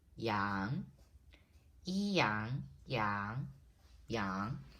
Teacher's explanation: That is the rising tone, which is the 2nd tone.